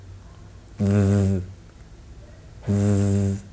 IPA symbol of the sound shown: ð